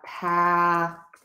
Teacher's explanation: the word paddle, which has that very open American ah sound.